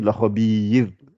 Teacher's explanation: Rappelez-vous, le ra précédé de kasra, donc je ne gonfle pas.